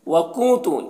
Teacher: وکنت نون میں اخفا ہوگا تو نون کی آواز کو ناک میں چھپا کر پڑھیں گے